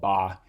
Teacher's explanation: you're bringing your two lips together to make a stop